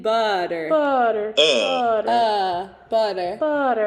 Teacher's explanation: in the middle middle vowel we're going to do a thing called a schwa which is the uh like in butter butter butter butter and